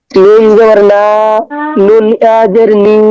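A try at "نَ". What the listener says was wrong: নুন জবর না বললেন, এই টান এটা কিসের টান?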